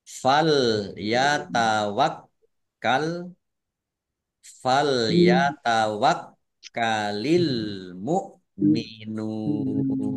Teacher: kafnya dibaca dobel, ada tasdidnya ditekan biar tampak dobelnya